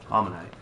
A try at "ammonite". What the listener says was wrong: Ammonite. Ammonite. It's not almond. It's ammon.